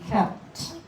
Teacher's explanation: You really only hear the T, kept. You can hear the P a little, but just tiny.